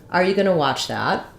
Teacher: The main stress in this phrase is on watch. So that's going to have a clear vowel. It's going to be longer than the rest.